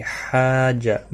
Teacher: بڑی مد ہے، مد لازم، 5 الف کے برابر کھینچ کر پڑھیں گے